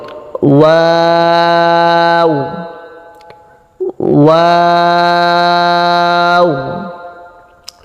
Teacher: 2 ঠোঁট গোল করে শুরু হবে, গোল করে শেষ হবে। মাঝে কিছু সময় মুখ খুলে থাকবে, আওয়াজ নরম হবে।